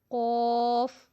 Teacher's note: جو ہمارے حلق کی طرف ہے، جو زبان کی جڑ کہیں گے ہم اس کو، روٹ ہے جو زبان کا۔ تو جب ہم زبان کی جڑ کو اوپر والے تالو کے ساتھ، جو ہماری گوشت کا چھوٹا سا ٹکڑا لٹک رہا ہے نا، اس کے ساتھ جب ہماری زبان کی جڑ لگے گی تو پڑھا جائے گا قاف